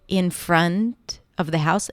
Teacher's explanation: So it sounded more like an M, and the reason why that happened is because it was a combination of the N, in, and then the F. I had to bring my teeth to touch the bottom lips